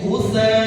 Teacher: kalau bacaan ghutha itu dia menjadi mad wajib muttasil. Wajib dibaca berapa? 4 harokat.